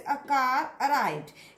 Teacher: आर, है ना, आर का इज प्रोनाउंस्ड, आर का उच्चारण होगा अगर उसके बाद में कोई वर्ड है which is beginning with अ vowel, जो एक वॉवल से स्टार्ट हो रहा है, तो उस आर का उच्चारण होगा।